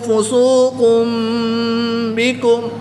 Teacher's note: 2 پیش کی تنوین کے بعد حرف با ہے تو یہاں پر اقلاب ہوگا، تنوین کو میم سے بدل کر غنہ زمانی کر کے پڑھیں گے